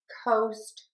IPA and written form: koʊst (COAST)